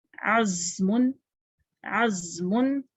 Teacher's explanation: دانتوں کو دبا کے نکالتے ہیں، زائی، اور زبان ہماری دانتوں کے پیچھے رہتی ہے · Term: سیٹی کی آواز